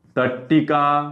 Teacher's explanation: तिसरं त पुढे ट किंवा ठ आल्यास त चे रूप रूपांतर त चे रूपांतर कशात झाले ट मध्ये झाले